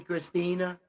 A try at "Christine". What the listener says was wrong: Christine? Christine, yeah.